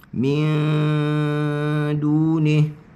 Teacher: Kita kena sampaikan di sisi huruf dal dalam keadaan dengung rendah dan dengunya pekat.